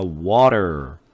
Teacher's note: 모음과 모음 사이의 T는 D 소리로 바꿔서 water가 아니라 water. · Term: flap T